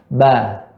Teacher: Ba, ya, kedua bibir, ya, bersentuhan. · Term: huruf ba